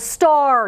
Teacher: you're hearing the r the a is controlled by that r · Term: controlled r